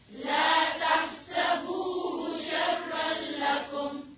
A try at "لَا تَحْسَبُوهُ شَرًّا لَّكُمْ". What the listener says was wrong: با کے بعد جو واو آ رہی ہے اس کو اور واضح کریں.